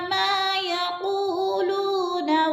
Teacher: मा अलिफ मद्दा है, खींच कर पढ़ेंगे दो हरकात के बराबर। यक़ूलू, यक़ू पे भी वो मद्दा, लू पे भी वो मद्दा, दोनों को दो अलिफ के बराबर खींच कर पढ़ना है